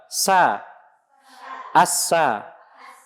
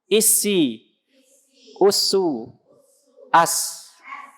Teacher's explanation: Kan sofir kan suara tajam ya, tajamnya suara karena keluar melalui celah-celah. Makanya kalau rapat ya nggak keluar suaranya. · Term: sifat sofirnya